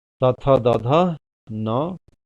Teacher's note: तथ दध न, तो यह जब इसका उच्चारण करते हैं इन अक्षरों का और इस स का, जिसे हम दांत स कहते हैं, तो जीभ दोनों दांतों के बीच में आती है या सट जाती है। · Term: दंत व्यंजन